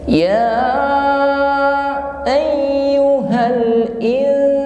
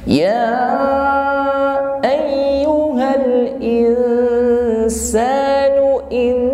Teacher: Dalam mengucapkan nun sukun in, ini tidak sepenuhnya nun sukun ya. Mengucapkan in kita samarkan pada huruf sin ya, dengan berdengung. Namun bibirnya tetap senyum saja.